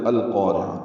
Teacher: قاف پر الف مدہ پر را باریک عین وسط حلق سے ادا کریں گے، تائے مربوطہ پہ وقف کر دیں گے اور یہ اس پہ ہمس ہوگا۔